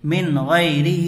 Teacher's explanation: بغیر گنہ کے جلد پڑھیں گے، لمن خ، شین زیر شی، لمن خشی، یا زبر یا، لمن خشی، میم نون زیر من، غین یا زبر غی، من غی، را زیر ری، من غیری، ہا کھڑی زیر ہی، من غیری ہی، یہاں بھی نون ساکن کے بعد حروف حلقی میں سے کیا آ رہا ہے؟ غین آ رہا ہے، تو یہاں نون کو ظاہر کر کے جلد پڑھیں گے